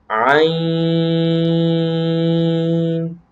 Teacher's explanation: اور یہ بھی حروف حلقیہ میں سے ہے، اور یہ زبان حلق کے درمیان والے حصے سے ادا ہوتا ہے